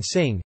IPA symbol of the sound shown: ŋ